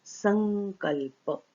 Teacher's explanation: सम के अनुस्वार के बाद क आया, इसलिए इस अनुस्वार की जगह पर ङ हो गया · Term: पदांत अनुस्वार